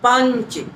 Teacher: हमें बोलते समय वो पूरी ध्वनि का जो अनुस्वार निकालना है उसको नाक से बोलना पड़ेगा। पंच, तो आपको सुनाई दे रहा होगा वो स्वर जो है नाक से निकल रहा।